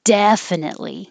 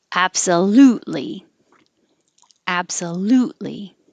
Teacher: you don't have to release the t definitely just hold it there because it's the same place as the l